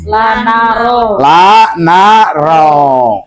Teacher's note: Nun itu dari ujung lidah dengan langit-langit yang atas